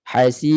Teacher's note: Biar jelaskan bunyi ra tu di hujung, walaupun dia nipis, bunyi nipis tu kena jelas. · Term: nipiskan ra